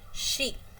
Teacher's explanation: There is no vibration of vocal cords, but the air comes from soft palate and there is a involvement of tooth ridge. So, it is called palatal alveolar fricative. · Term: palato alveolar fricative